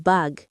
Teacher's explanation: The answer isn't b or k. It's that voiced velar plosive g.